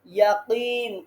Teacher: এক আলিফ টানতে হবে এরপরে জিহ্বার গোড়ায় ধাক্কা দিতে হবে